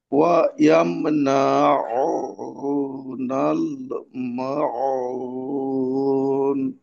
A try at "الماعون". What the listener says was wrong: আচ্ছা, এখানে মাউন, মাটাকে আর একটু লম্বা করতে হবে। আয়াতের ভিতর অনেক সময় দেখা যায় আপনার দুই একটা উচ্চারণ করার সময় আওয়াজটা বাধাগ্রস্ত হয়ে যায়, যেটা পরবর্তী উচ্চারণের সঙ্গে পূর্বের উচ্চারণকে একটা আহ, আলাদা করে দেয় আর কি, হ্যাঁ, একটা দূরত্ব তৈরি করে। তো এটাকে মিলে যেমন ওয়া ইয়ামনাউনাল, তো এখানে ওয়াওটা একেবারেই আলাদা হয়ে গেল। আর একটু যুক্ত রেখে একটা আয়াতে।